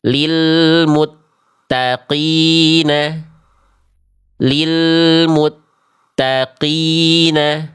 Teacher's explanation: Itu jadinya kaf. Harusnya qof itu tanpa percikan nafas.